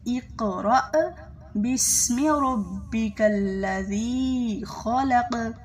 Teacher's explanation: اقرأ جو حمزہ ہے وہ گلے کے سب سے نیچے والے حصے سے ادا ہوتا ہے